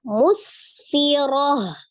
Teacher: ketika huruf tak marbutoh sukun atau mati, maka menjadi bunyi huruf ha sukun ya. Ketika dia hidup, maka menjadi bunyi huruf ta.